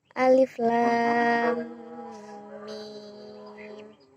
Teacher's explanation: Disebut mustaqal harfi karena dalam hal ini bacaan diberatkan akibat terjadinya proses penidghaman. Cara membacanya adalah 6 harokat 3 alif. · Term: mad lazim mustaqal harfi